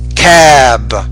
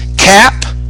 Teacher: the vowel sound should be longer but when it ends in P the vowel sound is shorter